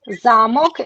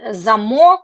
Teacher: castle, zamok, the stress on the first syllable, and zamok on the second, the stress on the second syllable